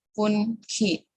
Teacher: the alveolar nasal na became velar na when it is followed by the velar sound kha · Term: Velarization of na